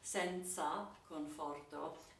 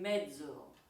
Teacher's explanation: Also, you have in this text the difference between the way the Z is pronounced depending on the other consonants in the vicinity. So senza, the Z is pronounced TS as in tsetse flies